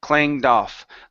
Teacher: So take that D, connect it to the word off. So it's doff.